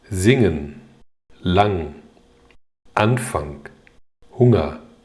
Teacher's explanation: 第一个组合▁ng，▁这是一个鼻音，不能读成▁n▁加▁g。